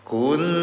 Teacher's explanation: Nun dalam keadaan tasdid namanya guna dengungkan selama 2 harokat.